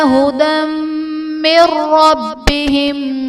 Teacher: ھدی من ربہم میں دال پر 2 زبر کی تنوین، تنوین کے بعد حروف یرملون میں سے میم ہے، تو یہاں پر ادغام مع الغنہ کا قاعدہ ہوگا، یعنی تنوین میں ہم غنہ کر کے پڑھیں گے۔ من ربہم میں نون ساکن کے بعد حروف یرملون میں سے را ہے، تو یہاں پر ادغام بلا غنہ کا قاعدہ ہوگا